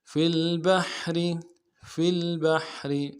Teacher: منشآت وَلَهُ الْجَوَارِ الْمُنشَآتُ فی البحر، فی البحر، فا کو لام کے ساتھ ملانا ہے، با کو حا کے ساتھ ملانا ہے، حا کو گہرائی سے ادا کریں گے، را کو باریک ادا کریں گے. فی البحر، فی البحر کالاعلام، کالاعلام، دونوں صورتوں میں پڑھ رہا ہوں، وقف کی بھی اور بغیر وقف کی بھی.